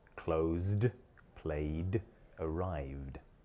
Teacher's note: Verbs which finish in a voiced sound, such as close, play, and arrive, take the voiced ending d.